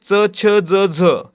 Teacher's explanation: च छ ज झ हे जे वर्ण आहे ते तालव्य आणि दंत तालव्य दोन्ही प्रकारे येतात